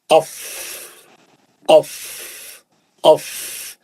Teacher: नीचे का होंठ, ऊपर के 2 दांत उसके ऊपर बैठेंगे और फिर पीछे से हवा मारेंगे, हवा का प्रेशर रहेगा तो निकलेगा अफ अफ अफ।